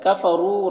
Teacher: را کو پر پڑھیں گے اور یہاں پر واو مدہ ہے